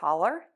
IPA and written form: kɔlər (COLLAR)